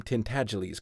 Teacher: it rhymes with sneeze and the accent is on the second syllable and the g is soft